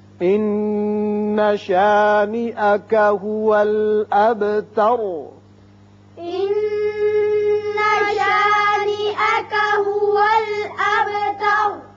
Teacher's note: ان نون مشدد ہے، غنہ ہوگا. هو الاب با ساکن ہے، صفت قلقلہ ادا کریں گے. تر را پر ہو جائے گا اور پہلے چونکہ زبر ہے اس لیے را پر بھی پڑھیں گے.